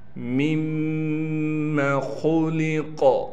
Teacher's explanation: 2 میمیں ہیں، دوسری میم پر تشدید ہونے کی وجہ سے ہم یہاں غنہ کریں گے۔ خا کو موٹے پڑھنے کے ساتھ لام کو بھی باریک پڑھنا ہے۔